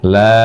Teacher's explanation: Lalu lam, la-nya panjangkan dengan panjang 6 harokat.